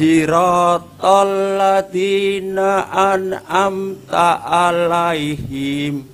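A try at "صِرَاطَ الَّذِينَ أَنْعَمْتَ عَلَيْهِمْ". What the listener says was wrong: Alaihim. Jangan alaihim. Jangan panjangin ya. Alaihim.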